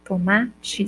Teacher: Quando eu falo tomate, eu tenho o I no final. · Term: semivogal